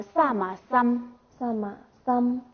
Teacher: 后加字嘛的话，就是说，它带有这个双唇鼻音